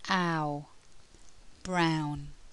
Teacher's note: the mouth moves from open to closed the lips go from spread to rounded and the tongue moves from the front of the mouth to the back of the mouth